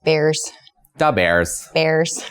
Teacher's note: midwestern accent draws out vowel sounds and makes them a little higher um on your palette i guess bears dub airs bears yeah